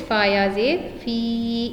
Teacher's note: Ya madda should be long for one time, so it will make the sound of fi.